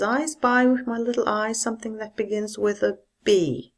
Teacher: this is a statement so you have to use a fall